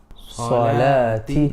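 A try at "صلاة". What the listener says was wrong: No. Sa. No, you're saying swa. No. Sa. Drop it. Sa. Salati.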